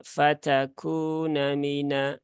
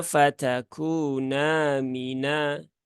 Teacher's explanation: ini terbaca pendek fatun Mina nah harusnya fatakuna Mina gitu ya huruf nunnya dibaca panjang dua harakat jangan dipendekkan